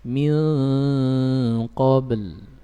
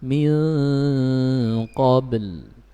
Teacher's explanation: Min qa, ba-nya sukun, kemudian lidah terakhir mendarat di makhrajnya lam yang sukun